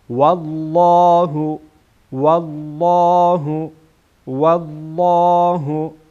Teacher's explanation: اینجا لام جلاله پرخوانده میشه